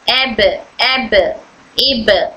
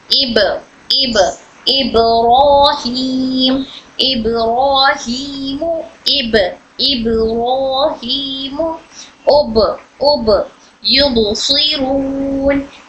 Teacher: यहां पर ब में खलखला हो रहा है इसलिए इको साउंड हो रही है।